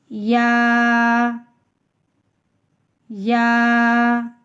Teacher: آگے چلتے ہیں، یا یا، منہ کے خالی حصے سے بحالت مدہ منہ کے خالی حصے کی ہوا سے یا کی ادائیگی ہوتی ہے